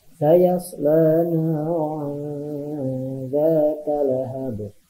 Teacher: Hukum tajwidnya ikhfa ya. Dibacanya samar-samar, ditahan 2 harokat.